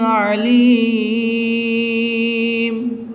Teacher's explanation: وقف کی حالت میں یہاں پر مد عارض ہوگی، 2 سے 3 الف تک کھینچ کر پڑھیں گے